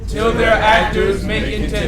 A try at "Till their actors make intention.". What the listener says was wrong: Well, you put emphasis on there. Till their actors make intention.